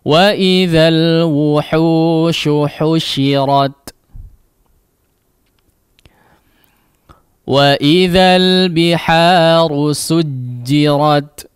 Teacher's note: Sinnya diperhatikan ya, tetap ditipiskan, jangan menjadi sad ya ataupun huruf yang lainnya.